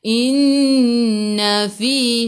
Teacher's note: Nun ada sabdu. Okey, tekan ke dalam nun. Dengung wajibul gunnah. Wajib dengung. Inna fi. Fi dua harakat ada ya mad asli.